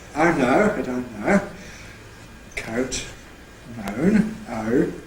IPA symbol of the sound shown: æ̱ү